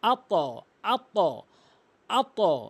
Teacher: হামজা ত জবর আত, এখানে কলকলা, এখানে ধাক্কা দিয়ে পড়তে হবে